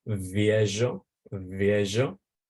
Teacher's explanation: the V, which is fricative. You have to put your teeth over your lower lip and do a v, viejo.